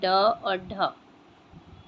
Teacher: उच्चिप्त व्यंजन के उच्चारण में जीभ ऊपर उठकर पहले मूर्धा को स्पर्श करती है, फिर तुरंत झटके से नीचे गिरती है